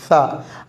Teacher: சா நாக்கை பல்லிற்கு வெளியே சற்று வைத்து சொல்ல வேண்டும்.